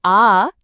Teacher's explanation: আবার যখন আমরা বলি আ তখন খেয়াল করে দেখুন জীবটা একদম নিচে নেমে আসে। আর জীভের এই যে উপরে নিচে যাওয়া এটার সাথেই কিন্তু মুখ খোলা বা বন্ধ হওয়ার একটা সরাসরি সম্পর্ক আছে। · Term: নিচুর স্বরধ্বনি